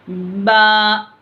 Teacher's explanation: जो दोनों होठों के भीगे वाले हिस्से हैं अंदर से, वो दोनों होठों के तरी वाले हिस्से आपस में मिलते और सख्ती नहीं होती, हल्की सी सख्ती के साथ पढ़ा जाता।